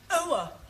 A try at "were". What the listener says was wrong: Try again, but this time, don't say ower, just were. Were.